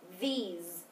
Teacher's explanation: yes the S is voiced Z